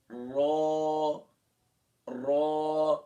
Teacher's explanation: اس میں صرف تکرار پائی جاتی ہے، لیکن زیادہ تکرار نہیں کرنا ہے، کوئی اکثر اس کو اس طرح بھی پڑھتے ہیں را نہیں، را صرف تکرار ہے، یعنی تھوڑا سا۔